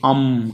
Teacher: अ के ऊपर बिंदी आएगी तो इसको नासिका से उच्चारण करिए, अम कहेंगे। नासिका का उच्चारण तब होगा जब मुख बंद हो जाएगा और नाक से आवाज आएगी। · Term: अनुस्वार